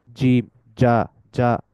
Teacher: জিমটা উচ্চারিত হয় কিভাবে যখন জিহবার মধ্যভাগটা তালুর সাথে মিশে